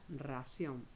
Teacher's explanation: Ración se acentúa en la última sílaba y lleva tilde porque termina en N. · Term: agudas